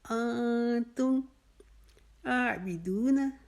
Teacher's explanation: ولا، اس میں بھی انتم کو ہم اخفا کریں گے، نون کو ظاہر نہیں کریں گے